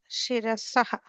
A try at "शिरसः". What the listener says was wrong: Shirasah, not saha, no a sound there. Just shirasah.